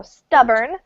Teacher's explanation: So stress falls on the first syllable. And we don't really pronounce the O